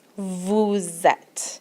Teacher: Vu form vuzette and you'll hear this little liaison the s the sound of the S goes on to the sound of the e